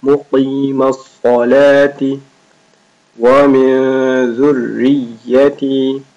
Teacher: قاف and صاد both are thick letters.